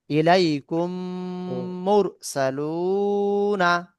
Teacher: জি, তারপরে মিম সেকেন্ডের পরে মিম সেকেন্ডের ইদগাম। মিম সেকেন্ডের পরে মিম আসলে প্রথম মিমকে দ্বিতীয় মিমের সঙ্গে মিলিয়ে গুণনার সঙ্গে পড়তে হবে। একে ইদগামের সাফাবি বলে।